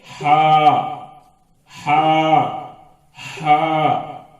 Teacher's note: حلق سے اپنے اندر کی پوری ہوا باہر ایک دم پھینکنے سے نکلتا ہے